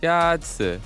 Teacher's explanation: The first tone is a high, level tone.